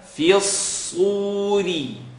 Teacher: So you have the light fa, the heavy slad, and the light ra